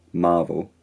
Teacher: the vowel in marvel is a bit fronted, marvel, and the got vowel is distinctly unrounded, so modern.